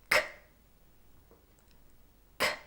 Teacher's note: This is an unvoiced sound, so you need lots of breath to make the sound. But no voice is required. · we have to block the air by pressing the back of our tongue on the soft palate. This is the soft tissue that hangs at the back of your mouth towards your throat. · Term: hard C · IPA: /k/